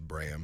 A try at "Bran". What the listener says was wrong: Bran. No, with an N. N with an N. No, it's